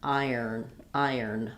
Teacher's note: So basically we have to think of iron as not having that O sound, and visualize it one of these ways, whichever way makes the most sense to your brain. Iron, that there's that kind of ire sound, and then we're adding an N